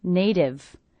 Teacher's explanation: it's a T coming between 2 vowel sounds, will be a flap T, sounds like a D